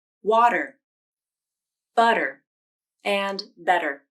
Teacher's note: the flap is called the flap T, and it can take the place of a T sound in words like water, butter, and better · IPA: /ɾ/